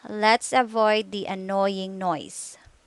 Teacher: Your lips position move from slightly rounded oval position to relaxed, slightly parted position. Your tongue's position relaxed, move from mid-high to high position.